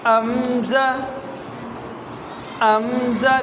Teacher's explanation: گلے کے شروع سے آواز نکالنی ہے